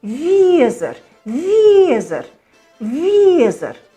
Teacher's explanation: Не «виезер», не «виезер», «везер». Как бы от «и» начать и «е» закончить.